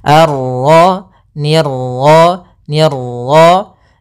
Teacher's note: Ini salah. Untuk pantulan dalam huruf ra itu cukup sekali saja, karena sifat ra ada sifat takrir, yaitu pengulangan, tapi hanya sekali